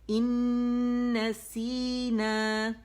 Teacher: حرف نون غنہ مشدد ہے تو اسے 2 سے 2.5 کاؤنٹ دیں گے. ٹھیک ہے, ان نسینا او.